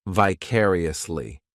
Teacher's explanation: This adverb has 5 syllables, and the stress is on that second syllable,